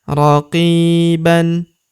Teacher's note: Huruf qi kita panjangkan dua harakat karena terdapat ya sukun di depannya yang ini. Raqiban tanwin an alifnya tidak dibaca atau dianggap tidak ada.